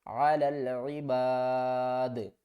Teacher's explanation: وقف کی صورت میں دال ساکن ہو جائے گی، اور جب دال ساکن ہوگی تو اس کے اوپر قلقلہ کریں گے کیونکہ یہ حروف قلقلہ میں سے ہے.